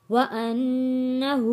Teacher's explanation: ہا کے اوپر الٹا پیش ہے، ایک الف کے برابر کھینچ کر پڑھنا ہے۔